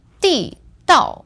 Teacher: So this word, 地道, is fourth tone, fourth tone.